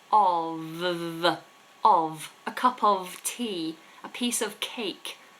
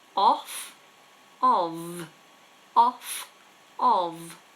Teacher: we pronounce the F like a V